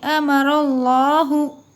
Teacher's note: अल्लाह का लाम मोटा पढ़िए, अल्लाह के लाम से पहले ज़बर है